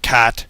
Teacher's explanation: you would have low front tongue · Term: ash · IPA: /bæt/